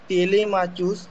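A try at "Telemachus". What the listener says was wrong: টেলিম্যাকাস। সিএইচটা ক উচ্চারণ হয়।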